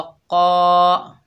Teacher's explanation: कौफ के ऊपर ज़बर है, आगे अलिफ खाली है, ये अलिफ मद्दा है, एक अलिफ की मिकदार खींचकर पढ़ेंगे और कौफ जो है हरूफ इस्ताला में से है, मोटा पढ़ा जाएगा